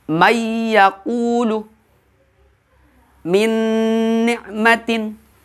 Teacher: Ada yang gunnah, ada yang idgham bila gunnah. Kalau yang gunnah diidghamkannya dengan dengung. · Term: idgham bi gunnah